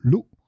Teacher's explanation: no is lu, and mind the glottal stop at the end